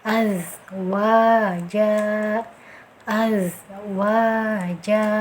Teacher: hati-hati di zai ini mempunyai sifat sofir, mendesis.